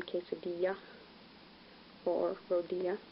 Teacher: when you encounter double L's, it sounds like ya